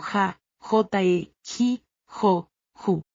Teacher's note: En español la J suena como ja, J e j. Es un sonido áspero que viene de la garganta. · Es un sonido áspero que viene de la garganta. En chino no tenemos ningún sonido similar. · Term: la J española